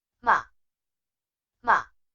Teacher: The fourth tone has a sharp falling pitch.